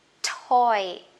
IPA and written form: tɔɪ (toy)